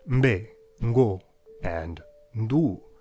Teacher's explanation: You start a stop sound in your nose, and then immediately raise your soft palate to release it through your mouth, b, d, g, all in a single unit, mbe, ngo, and ndu. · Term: prenasalized consonants